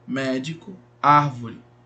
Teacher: proparoxítonas a sílaba tônica é a antepenúltima